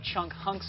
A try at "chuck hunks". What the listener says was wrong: Chuck hunks. Not chunk hunks. Chuck hunks.